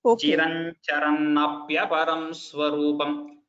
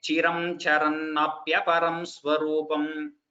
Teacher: When we join it, the sandhi is Chiran Charan. So instead of that anuswara that you see on top, it becomes the nya of Samskrita